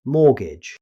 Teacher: Here's another word with a silent letter. Although there's a T in the spelling, native speakers never pronounce it. Instead, they simply say mortgage.